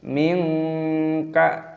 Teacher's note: nun sukun bertemu dengan kaf, dibaca ikhfa, artinya tidak jelas. Cara membacanya tidak jelas, minka.